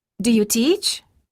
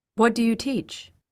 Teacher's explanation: The following question pairs contain both rising and falling intonation, depending on whether they contain a question word or if they're yes-no questions. The first question of the pair has rising intonation, and the second has falling intonation.